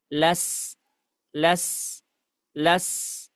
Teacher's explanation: sifat sofir yang dimiliki oleh huruf sin itu harus benar-benar terdengar.